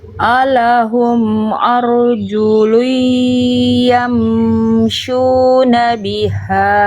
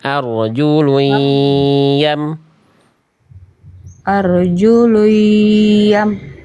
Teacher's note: Idgam jangan nyisain huruf nun langsung masuk ke ya. Dimasukin ke ya. Nyisain huruf nunnya bunyi dengungnya aja.